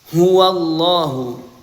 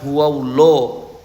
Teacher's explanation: lafaz Allah di sini dibaca tebal karena sebelumnya didahului fathah maka lafaz Allah dibaca tebal Ya, bukan dibaca huwallah ya, huwallahu ahad.